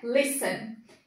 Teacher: percebam que a gente pronuncia com maior intensidade o início da palavra lis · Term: sílaba tônica